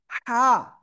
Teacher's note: গলাটা চেপে পড়তে হবে এই অক্ষরটা। হা, এক লিপ টান।